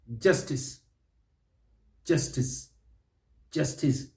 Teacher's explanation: justice justice justice stress is on that first syllable